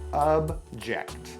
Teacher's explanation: Notice that the O in object actually sounds like a UH.